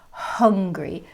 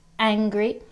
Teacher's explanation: the sound after the h is an uh an uh sound it's not an ah sound